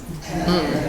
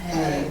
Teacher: if you have a word that starts with H in English, in Jamaican, you drop the H.